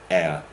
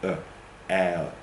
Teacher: Okay, so a diphthong is a vowel made up of, in fact it's a double vowel. It starts in one position and then glides to another.